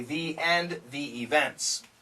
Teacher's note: when we have the word thee followed by a vowel AE I O U we say the events and we say the end